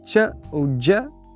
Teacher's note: que no francês acadiano, antes de vogais altas, é dito como ch ou j, exatamente como no português do Brasil.